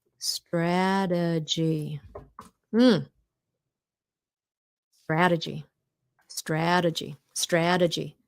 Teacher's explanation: look that T in between two vowels. We turn it to a D